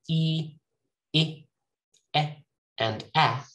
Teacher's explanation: So E, I, E, and A, these are produced at the front of my mouth. That means the tongue is pushed forward a little bit to the front of my mouth.